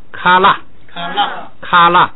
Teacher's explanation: 本来是拉是升，后边不许升，它只好变平调